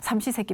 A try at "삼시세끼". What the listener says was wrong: 발음을 좀 잘해요. 3번의 식사지 삼식세끼?